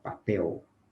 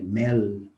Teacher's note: como nós falamos papel, nós pronunciamos algo parecido com U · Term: alofone do L